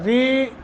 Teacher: را کو ترقیق کے ساتھ پڑھیں گے، ترقیق باریک باریک باریک۔